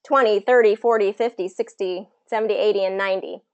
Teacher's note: of a D sound instead of that T sound in it we have a D sound and it's usually first syllable stress